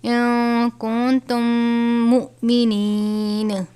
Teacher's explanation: حمزہ ساکن ہے، جھٹکا دے کر پڑھیں گے